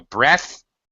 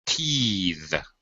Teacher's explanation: we change the vowel sound and we also change the th to a voice th